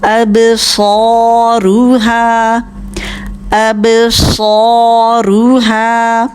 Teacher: أبصارها میں با ساکن ہے، قلقلہ کیجئے. اب صاد موٹا بھی کرنا ہے، سیٹی کی بھی آواز ہوگی، 2 حرکت لمبا بھی کرنا ہے کیونکہ کھڑا زبر ہے اس کے پر.